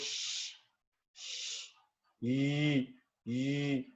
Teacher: आपकी जो front of tongue है that is actually moving towards the hard palate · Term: पैलेटल